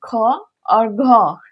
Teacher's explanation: महाप्राण के उच्चारण करते समय हमारे मुंह से हवा जो है अल्प प्राण के अलावे थोड़ा ज्यादा निकलती है, यानी अल्प प्राण से ज्यादा निकलती है, तो वो महाप्राण वर्ण होता है।